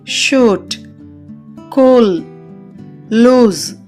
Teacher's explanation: పెదాలు గుండ్రంగా ఉండి నాలుక నోటిపై భాగానికి దగ్గరగా వస్తుంది వోకల్ ట్రాక్ట్ యొక్క వెనుక భాగంలో వ్యక్తీకరించబడుతుంది ఎగ్జాంపుల్స్ చూద్దాం షూట్ కూల్ లూస్ · ఊ దేనిని పలికేటప్పుడు పెదాలు గుండ్రంగా ఉండి నాలుక నోటిపై భాగానికి దగ్గరగా వస్తుంది వోకల్ ట్రాక్ట్ యొక్క వెనుక భాగంలో వ్యక్తీకరించబడుతుంది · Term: లాంగ్ వోవెల్స్